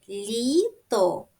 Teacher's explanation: голосний звук і пом'якшує попередній приголосний л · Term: м'якість приголосних